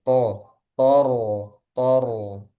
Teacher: Nah, ini sama-sama tebal. Po tebal, ro tebal.